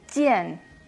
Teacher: la J como una CH sin tanto aire